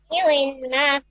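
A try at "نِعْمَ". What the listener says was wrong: নি মা। নি উই মা না, নি মা।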